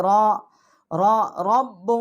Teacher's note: را جو ہے اس کو ہم موٹا پڑھیں گے، منہ پر کر کے پڑھیں گے